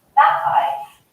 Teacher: you don't hear the T, but I'm stopping the air from coming out of my mouth, and then it's released. So it's quite subtle, but you do hear the difference. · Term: glottal T